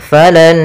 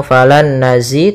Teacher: nun yang pertama masuk kedua sambil ditahan gunnahnya. Maka falan, tidak langsung falan nazi tapi tahan dulu. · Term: idgham ma'al gunnah